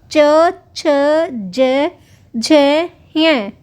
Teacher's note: च वर्ग में च छ ज झ य और श इनका उच्चारण स्थान तालू होता है